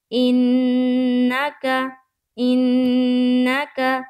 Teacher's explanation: نون میں نون مشدد کا غنہ کرنا ہے